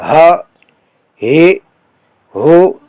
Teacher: یہ حلق کے نیچے والے حصے سے نکلتا ہے جو سینے کی طرف ہے، یعنی جیسے سینے سے آواز نکلے، ہا ہے ہو.